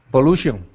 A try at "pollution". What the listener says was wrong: Perfect. Remember, the TI is a sh sound.